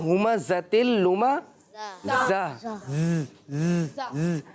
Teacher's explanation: जहाँ पर भी जा आता है तो वहाँ पर सीटी का साउंड आता है, यानी वहाँ सीटी निकालते हैं